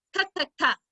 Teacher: when i make this sound my mouth stays open the whole time you see my teeth my tongue touches the top of my mouth for a moment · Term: k sound